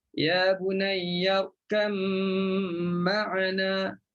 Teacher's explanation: Kita masukkan ba dalam mim. Okey, masukkan ba dalam mim. Idghamlah.